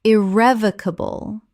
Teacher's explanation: Five syllables with the stress on the second.